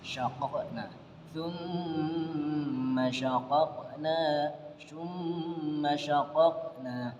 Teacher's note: Ini hukum bacaan qalqalah karena terdapat pantulan di sini. Nah, qalqalah di sini karena bukan qalqalah di akhir dan pantulannya tidak terlalu besar, maka disebut dengan qalqalah sughra